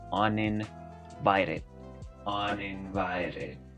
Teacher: La T la vamos a pronunciar como una flap T.